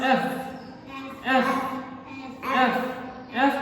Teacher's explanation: दांत और होंठ आपस में टच हो रहे हैं